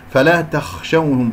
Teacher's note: الخاء ساكنة يجري فيها صوت والنفس، مفخمة مرتبة رابعة من أحرف الاستعلاء طبعا لأنها ساكنة.